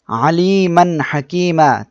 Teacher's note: তানবিন এরপরে হা অক্ষরটা ইজহারের অক্ষর ইজহারের অক্ষর আসছে এজন্য আমাদের স্পষ্ট করিয়া পড়তে হবে